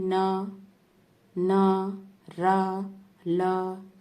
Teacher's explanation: इनमें क्या है, जो जीभ है वो हमारी जीभ है ऊपरी मसूड़ों को स्पर्श करती है बोलते समय। वत्सर्य व्यंजनों को बोलते समय जिह्वा जो है हमारी वो ऊपरी मसूड़ों को स्पर्श करती है।